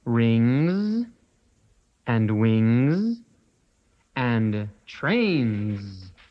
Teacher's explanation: S sounds like Z when it's at the end of words